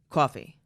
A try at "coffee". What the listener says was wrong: Okay, a little New York. coffee. Coffee. Coffee. Coffee. Coffee.